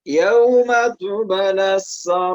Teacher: ba sukun, maka dia dibaca dengan cara memantulkan bunyinya karena dia hukum bacaannya qalqalah sugro ya. Jadi ada huruf qalqalah di tengah ayat atau di tengah kalimat, maka dia dinamakan dengan qalqalah sugro ya.